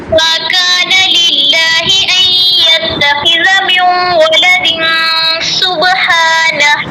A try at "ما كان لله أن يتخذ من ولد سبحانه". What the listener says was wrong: سبحانہ ہا اور آخر والا ہا جو ہے نا آپ کا واضح نہیں ہوتا. پہلے والا ٹھیک ہے آپ کا, جو اکثر حلق والا ہے نا وہ ٹھیک نہیں ہے. یہ آپ کا نا ایکسچینج ہوتا ہے, مطلب چینج ہو جاتا ہے اس طرح نا.